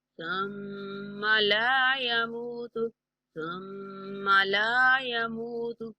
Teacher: ثم میم پر غنہ کریں گے، لا کو کھینچ کے پڑھیں گے